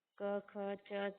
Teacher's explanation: इन वर्णों के उच्चारण में प्राण वायु में कंपन नहीं होता है यानी गूंज नहीं होती है अत कोई गूंज ना होने से यह अघोष वर्ण हो गए